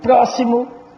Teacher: sílaba tônica é o pró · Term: proparoxítona